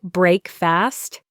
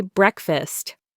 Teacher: The first syllable is stressed.